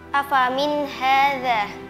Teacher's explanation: nun sukun bertemu dengan huruf ha. Dibaca jelas. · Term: izhar halqi, Izhar halqi